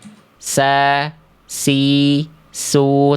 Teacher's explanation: Kalau sin berdesis mengalir suara mengalir nafas gitu ya.